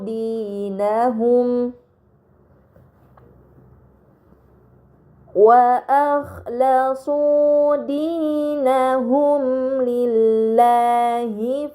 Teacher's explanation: Pada kata dinahum lillahi terdapat mim sukun bertemu dengan huruf lam. ini dinamakan izhar syafawi, maka mim sukun dibaca secara jelas.